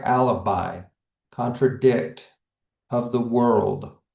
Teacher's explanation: We can actually hear this in the word anapest because we're ending with that stress. So two unstressed syllables, then one stressed.